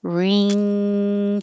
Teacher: it's closing off the air to your mouth and forcing the air through your nose